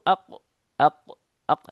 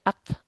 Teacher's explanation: Dia lebih dalam, kaf lebih maju gitu ya. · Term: qof